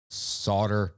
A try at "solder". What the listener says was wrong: Are you pronouncing the L? You're just kind of barely like, I'm just picking up a tiny bit of that silent L in there.